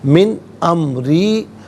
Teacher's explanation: امری، من میں نون ساکن ہے، اس کے بعد حرف حلقی حمزہ ہے تو نون ساکن کو اظہار کے ساتھ پڑھا جائے گا، غنہ یا اخفا نہیں کیا جائے گا